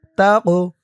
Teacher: এই কফটা কলকলার হরফ, ধাক্কা দিয়ে পড়তে হবে।